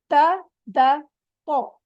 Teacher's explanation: क्या है कौन बताएगा यह आगे वाले दांतों की जड़ से जुबान की नौ को आगे वाले दांतो की जड़ से लगाए तो अदा होते